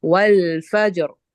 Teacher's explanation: را کی ہم نے حرکت کو ظاہر نہیں کیا، تو وہ ہماری ہو جائے گی موٹی والی